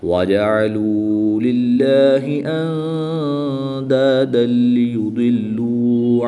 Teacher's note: دو زبر کی تنوین کے بعد لام حروف یرملون میں سے ہے تو یہاں پر ادغام بلا غنہ ہوگا، یعنی کہ بغیر غنہ کے ادغام کر کے پڑھیں گے۔